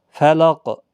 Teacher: وقف کی صورت میں جب قاف ساکن ہوگا تو اس پر قلقلہ بھی ہوگا، موٹا بھی پڑھا جائے گا